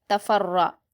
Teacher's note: और रा पर भी हरकत है और तशदीद है तो फा को रा से मिलाएंगे और रा को पुर पढ़ेंगे